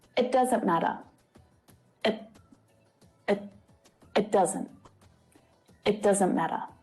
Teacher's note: when spoken quickly the t is often not fully pronounced either the air is not released after the sound so instead of t the air is caught and then you move quickly to the next sound · the vowel sound relaxes and it becomes the schwa sound uh and when spoken quickly the t is often not fully pronounced either the air is not released after the sound so instead of